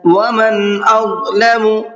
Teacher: نون کو ظاہر کر کے پڑھنا ہے اس لیے کہ نون ساکن کے بعد میں حمزہ آ رہا ہے اور حمزہ اظہار کے حرفوں میں سے ہے۔